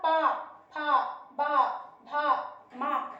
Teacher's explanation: जब हम इन वर्णों का उच्चारण करते हैं तो हमारे दोनों ओठ आपस में एक दूसरे को स्पर्श करते हैं, इसलिए इन व्यंजनों को ओष्ठ व्यंजन कहा जाता है।